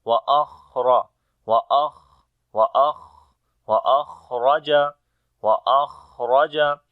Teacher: on the kha we make hums quality, the continuation of our breath